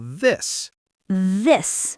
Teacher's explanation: The second one, this, has vibration. It's voiced.